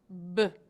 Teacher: When we say B, the voice box is turned on, and it feels like we have a motor in our throat. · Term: lip-popping sound